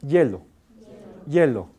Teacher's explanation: pronuncia hielo, la lengua toca la zona palatal. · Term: consonante fricativa